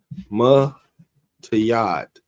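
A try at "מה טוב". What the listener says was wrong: not a yeah. It's not a duh. Matawab.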